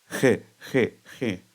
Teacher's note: O som da reada galega é semelhante ao H aspirado do inglês.